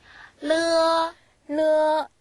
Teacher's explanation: 안쪽 천장을 이렇게 붙였다가 안쪽 천장에 혀를 붙였다가 떨어뜨리면서 소리를 내시면 되거든요. 한국어의 리을과 같은 발음이 납니다.